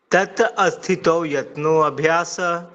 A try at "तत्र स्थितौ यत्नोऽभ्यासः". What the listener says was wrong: अब आ कहाँ से आ गया?